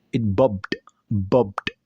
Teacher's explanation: D, disebut sebagai voiced sound. Artinya pita suara bergetar jelas saat mengucapkannya.